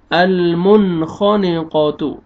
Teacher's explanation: نون ساکن کے بعد حروف حلقی میں سے خا آ رہا ہے، یہاں پہ آپ نے اظہار کرنا ہے